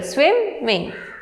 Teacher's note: There are 2 syllables and the stress is on the first syllable